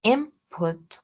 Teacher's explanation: input, which has the prefix in, is going to be pronounced as an M because it's before a P, which is bilabial. So we're going to change the alveolar N to a bilabial M, which is an allophone of the N, right?